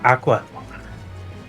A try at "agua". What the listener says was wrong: Remember the first time I ever saw so water in Spanish is agua, not aqua. yeah, it's AGUA. Yeah, there's a G in there.